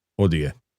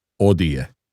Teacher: You're not supposed to hear the H. It's always silent. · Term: the H is always silent